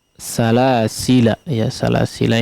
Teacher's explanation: huruf lam yang terakhir ya, salasila, di sini tidak dipanjangkan